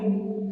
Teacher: متاعا لکم عین کو ڈائریکٹ لام میں ملائیں گے، عین لام 2 زبر ال پڑھنا ہے اس کو، ٹھیک ہے۔